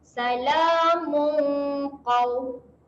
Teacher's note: Salamu bacaan dengung. Dengung sedia nak sebut huruf qaf. Jadi dengung dia dekat pangkal lidah lah.